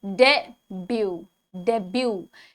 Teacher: The correct pronunciation is debut, debut. T is silent.